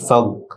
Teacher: ফা গয়নের সাথে যুক্ত হবে, কলকলা হবে না